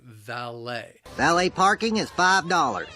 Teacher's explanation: The word has 2 syllables. The stress is again on that second syllable. And the problem is the same, that L-E-T is pronounced lay, valet.